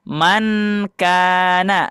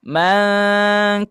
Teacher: Nah, maka ketika sesudahnya ada huruf ikhfa, maka yang N tersebut disembunyikan diganti dengan eng. Nah, eng ya, bunyi eng seperti itu.